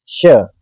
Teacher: तालू से हमारी जीवा लगेगी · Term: तालव्य श